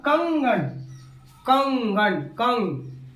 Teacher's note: इसका उच्चारण मुख और नाक दोनों से होता है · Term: अनुस्वार